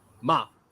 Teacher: And when I did the falling tone, ma, that's scold.